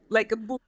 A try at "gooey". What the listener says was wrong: Not book. Not book. Guy, but goo. And then E. I know there's 4 letters, but there's only 2 sounds there. It's oo and it's E. Ah, all the way back. Back.